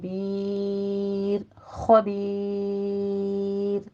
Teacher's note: خبیر میں خو کو آپ نے پر پڑھنا ہے، اور بیر خبیر را باریک ہو جائے گی، یا مدہ کے بعد ہم وقف کریں ہیں، مدارس وقفی کریں گے، یہاں بھی 6 کاؤنٹ کرنا ہے۔